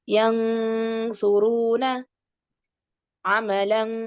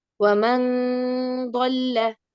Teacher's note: യൻസു, യൻ എന്ന് പറഞ്ഞിട്ട് നൂനിന്റെ മേലെ നാവ് അവിടെ ടച്ച് ആവാൻ പാടില്ല. Okay. Don't make it clear. Just give nasal sound. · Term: ഇഖ്ഫ